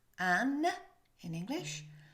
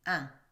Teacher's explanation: Now in English, N comes from the front of your mouth.